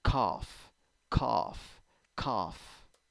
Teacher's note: but when you pronounce it you have o o o and g and h turns into f in this word